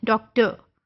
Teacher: British English में अगर आर किसी वर्ड के एंड पे होता है तो बड़ा वो गोल सा होके उसको वो कर देते हैं, आर को क्लियर वो प्रोनाउंस नहीं करते हैं। बट अमेरिकन इंग्लिश में आर is pronounced very clearly जबकि वो एंड पे आ रहा होता है।